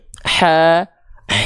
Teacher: huruf Ha tuh Dia punya sifat mengalir nafas